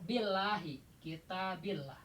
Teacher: Kalau sebelumnya kasroh nih lafaz jalalah ini itu la-nya dibaca tarkik ipis ke arah a.